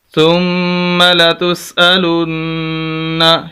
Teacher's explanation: ثم لتسألن، شد ہے، نون مشدد ہے، غنہ ہوگا، سخت کر کے پڑھیں گے، 2 مرتبہ پڑھا جائے گا پچھلے لفظ کے ساتھ مل کر، اور اوپر زبر بھی ہے اور اس کو سخت کر کے پڑھنا ہوگا، غنہ بھی کریں گے.